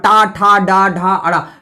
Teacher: टा वर्ग का उच्चारण स्थान मूर्धा